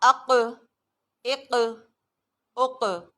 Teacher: قلقلہ کا مطلب ہوتا ہے آواز کا ری باؤنڈ کرنا، آواز مڑ کے آنا. جب اس حرف پر وقف کیا جاتا ہے تو اس میں آواز ری باؤنڈ کرتی ہے